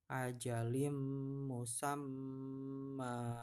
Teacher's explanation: bacaan bunyi n di kasroh tanwin ini masuk ke mim ya. Tulisannya ajalin pakainya n ya, tapi karena depannya bertemu dengan huruf mim, maka bacanya ajalim musamma, ya. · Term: idgham bihuna